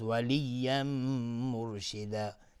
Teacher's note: تنوین بعدش میم ادغام با غنه